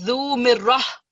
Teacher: The ta will always, this ta marbuta will always turn into ha. So instead of zu mirratin, it's zu mirrah.